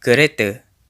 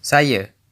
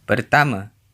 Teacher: Final a is usually pronounced as a schwa in Malay, at least in Malaysia.